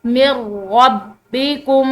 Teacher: تو یہ میم جو ہے یہ نون ساکن کے بعد آنے والے را کے ساتھ ملے گی، یعنی کہ یہ درمیان میں جو ساکن نون ہے اس کی آواز بھی بالکل ختم ہو جائے گی